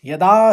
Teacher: दूसरे चरण में यदा दा के ऊपर आघात है